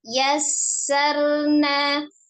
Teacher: Yang pertama ada sifat al-hamsnya ya, mengalir nafas ketika mengucapkan huruf sin. Kemudian termasuk huruf ketika lemah atau kuatnya, dilihat dari lemah atau kuatnya atau mengalir atau tidaknya, huruf sin termasuk huruf yang roghah ya.